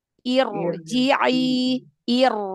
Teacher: ro sukun sebelumnya didahului oleh Hamzah wasal maka ro sukunnya dibaca tebal ya walaupun Hamzah wasalnya itu kasrah tapi kasrahnya kan kasrah tidak asli